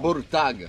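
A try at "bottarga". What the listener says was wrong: You gotta roll the R's.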